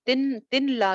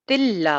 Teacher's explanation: یہاں پہ غنہ کے بغیر کریں گے کیونکہ لام اور را پہ ہم نے غنہ نہیں کرنا، تو تلا ہو جائے گا. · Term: ادغام بلا غنہ